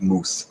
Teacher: one thing that a lot of people point out about northern english dialects and scots and things like that is um that there's a monophthong or slightly slightly more monofilament pronunciation of the the mouth vowel · there's a monophthongal or slightly more monophthongal pronunciation of the mouth vowel. So rather than mouth, it's something like moose or something along those lines, which is I suppose like a continuation, just because the back vowels weren't quite as affected in the north as they were in the south.